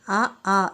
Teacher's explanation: అచ్చులు లేదా స్వరాలు ఇవి చూడండి అ ఆ వివృతం పూర్వ స్వరం కంఠ్యం అ అనేది వివృతం ఉత్తర స్వరం కంఠ్యం